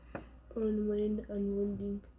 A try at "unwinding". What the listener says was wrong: Not win. IND says, look at the IND part. Take your stretch. All right, now look at the IND. What does IND say? Ein.